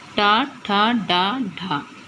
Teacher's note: इन चारों वर्णों का उच्चारण स्थान मूर्धा से होता है।